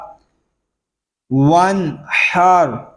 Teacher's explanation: حا یہ حلق کے درمیان والے حصے سے ادا ہوگا